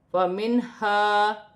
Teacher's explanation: نون پر کھڑی زبر ہے، ایک الف کی مقدار کھینچ کر پڑھا جائے گا، الف مدہ بھی ہے، اسے بھی ایک الف کی مقدار کھینچ کر پڑھا جائے گا، میم ساکن میں غنہ نہیں ہوگا۔ فَمِنْهَا، نون ساکن میں غنہ نہیں ہوگا کیونکہ آگے حروف حلقی میں سے ہا آ رہی ہے